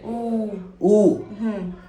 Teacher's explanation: ऊ जब बोलते हैं तो होठों पर प्रतिक्रिया होती है। ऊ सिकुड़ जाता है होठ। बिना ऐसे सिकोड़े हम ऊ को नहीं बोल सकते।